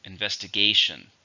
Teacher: How many syllables are in investigation? 5, stress on the fourth.